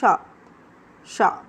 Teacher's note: शाह ध्वनि कैसी है? तालव्य है।